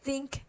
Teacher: think is voiceless it doesn't have any vibration